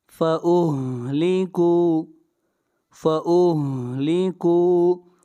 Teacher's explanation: کاف کو کھینچ کر پڑھیں گے، یہاں پر واو مدہ ہے